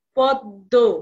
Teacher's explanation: শব্দের মধ্যে যে ম ফলা থাকে যে বর্ণের সঙ্গে থাকবে সেটা কি হবে দুবার উচ্চারিত হবে